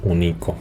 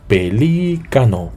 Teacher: llevan acento por ejemplo pelícano sí Y es una palabra esdrújula El golpe de voz recae sobre la antepenúltima sílaba